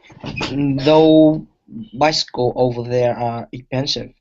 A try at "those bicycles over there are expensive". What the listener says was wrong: but watch your pronunciation please those don't forget the ending sounds